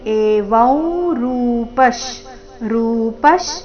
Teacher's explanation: ಅನುಸ್ವಾರದ ಉಚ್ಚಾರಣೆ ನಾಸಿಕ ಉ ರೀತಿ